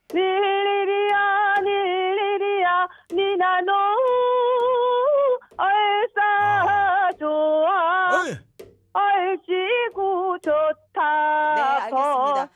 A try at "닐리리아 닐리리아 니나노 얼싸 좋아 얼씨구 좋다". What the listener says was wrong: 자 네. 지금 예 그 소절 수에 있는 가사 지금 충분히 소화가 되시고요. 지금 니나노에서 여기가 좀 어렵죠, 그죠?